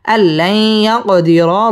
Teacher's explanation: ইয়া কফ কলকলার হরফ ধাক্কা দিয়ে পড়তে হবে